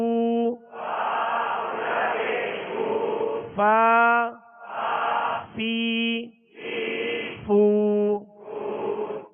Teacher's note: اس کا صحیح جو مخرج ہے وہ ہے کہ اوپر کے سامنے والے دو دانتوں کے کنارے اور نچلے ہونٹ کا تر حصہ، یہ مخرج ہے، یہ نکلنے کی جگہ ہے فا کی.